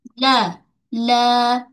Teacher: Wa wala pada lam baca dua harakat mad asli. Lam makhraj tepi hujung lidah kita. Okey tepi hujung ni hujung tepi hujung sebelum hujung ni tepi menyentuh pada gusi gigi atas la.